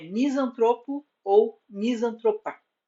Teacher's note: A sílaba tônica é tro, a penúltima, portanto, trata-se de vocábulo paroxítono